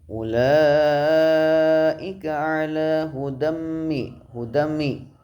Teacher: Ulaika ala hudami terdapat bacaan idgham bihunah, sebabnya ada fathah tanwin bertemu huruf mim, dibaca idgham mendengung selama 1 alif atau 2 harokat